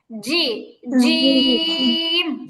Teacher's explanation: তালুকে স্পর্শ করবে জিম জিম হবে না মাখরাজ খেয়াল করতে হবে জিহবার মাঝখান উপরের তালুতে লাগবে জিহবার মাঝখান থেকে জিম উচ্চারণ হবে